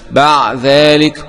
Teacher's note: الإدغام الصغير والكبير، قوله تعالى بعد ذلك، قرأ السوسي بإدغام الدال المهملة في الذال المعجمة بعد ذلك، وقرأ الباقون بالإظهار بعد ذلك.